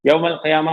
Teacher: یوم القیامہ میں یا کے اوپر کھڑا زبر ہے، الف مدہ ہے، 2 حرکات ہو جائیں گی. تا مربوطہ پہ جب وقف کرتے ہیں تو ہا کی آواز آتی ہے، یوم القیامہ.